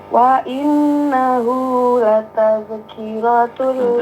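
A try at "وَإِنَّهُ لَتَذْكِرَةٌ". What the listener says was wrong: Zal jangan berpantul, jangan lataz, karena bukan huruf pantul. Dijaga, jangan tawalud.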